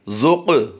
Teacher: यहाँ पर हमने क़ाफ़ को पुर भी करना है और उस पर कलकला भी करना है। एक तो हरूफ़ मुस्तालिया से है क़ाफ़ और दूसरा हरूफ़ कलकला से भी है।